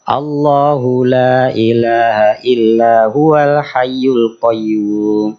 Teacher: Lafaz Allah dari segi lamnya dibaca tafkhim, dibaca tebal, dibaca vokalnya O kalau satu menjadi awal kalimat. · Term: lam jalalah